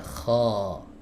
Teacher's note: fathahnya baca tebal maka suaranya ini diarahkan ke langit-langit ya ko kena huruf ko punya sifat istila k jadi bukan kho ko kho keluar ke depan bukan tapi ke atas ko ya jadi sampai kalau para ulama mengatakan yamtaliul fam bisodahu jadi mulutnya itu apa namanya?